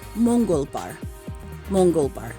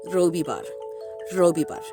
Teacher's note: there is a little bit of rolling of the R's